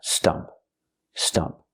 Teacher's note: When I say stump, I'm using the short sound like cup and up. It's a relaxed and closed sound.